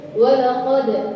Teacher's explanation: Kalau dal itu qalqalah maka harus mantul, tapi kalau dha justru enggak boleh mantul. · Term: qalqalah dal